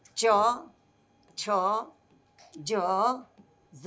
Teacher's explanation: તો આ ચચ્છ જ ય એ આપણે બોલીએ છીએ ને ત્યારે જીભ બહાર નીકળતી હવાને ક્યાં રોકે છે? તાળવા પાસે રોકે છે. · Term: તાલવ્ય